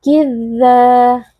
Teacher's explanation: Berhati-hati jangan beri tekanan berlebihan pada huruf dzal karena huruf dzal bersifat rokhawah, jadi ada sedikit aliran suara. Tidak boleh dibaca kidzaba, tapi halus saja, lembut saja karena rihun kan artinya adalah lembut ya, lunak.